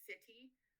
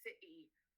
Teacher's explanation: There's a pause in the middle of the word by briefly closing the vocal cords. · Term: glottal stop